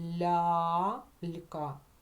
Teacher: цьому випадку ця буква буде позначати один звук а прислухайтесь лялька Ми чуємо м'який ль і одразу голосний а тільки один голосний а